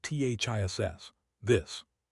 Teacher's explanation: This singular has a short I sound and an unvoiced s pronunciation ths. The vowel is short, relaxed, and happens in the throat.